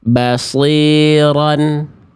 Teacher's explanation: Yang A salah karena vokal kasrah i-nya harakatnya tidak jelas.